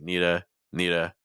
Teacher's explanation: in American English we often think of linking and reductions so for instance need to a lot of people are reducing that to like Nita